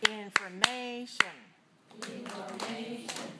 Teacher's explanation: so information is stressed on a third syllable